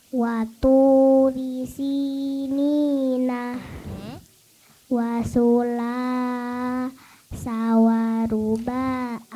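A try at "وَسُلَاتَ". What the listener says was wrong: Sekali lagi boleh tanpa putus. Wasulata.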